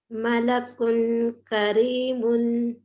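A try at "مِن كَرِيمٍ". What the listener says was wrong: نہیں, آپ ایک بھی ورڈ میں اخفا نہیں کیے صحیح سے. بہت زیادہ پریکٹس کی ضرورت ہے. ملک کریم.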